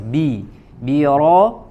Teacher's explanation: harus bi-nya disempurnakan kasroh ya, khafdu fakis sufla, diturunkan, direndahkan rahang bagian bawah. Bi ro ya, kemudian ro-nya tebal, bi-nya tidak ikut menjadi tebal.